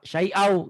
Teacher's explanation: tanwinnya baca satu, nyamperin ke tasdidnya gitu. Jadi syai'an, syai'a, masukin ke wa, syai'au.